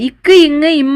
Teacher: நாவின் முதற் பகுதி அன்னத்தின் அடிப்பகுதி பொருந்துவதால் பிறக்கின்றன